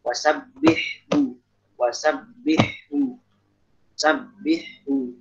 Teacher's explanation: Sabihu ini ada ha sama ha. Jangan sampai diidghamkan ya. Jangan wasabbihu.